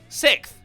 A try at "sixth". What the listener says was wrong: Six? It has an X in it. six. Sixth. S-I-X-T-H. Sixth. You are not doing the X.